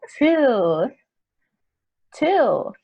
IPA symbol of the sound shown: t